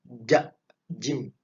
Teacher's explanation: makhraj daripada huruf Jim ada di tengah lidah